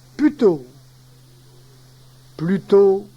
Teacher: Il y a suppression également de son L intérieur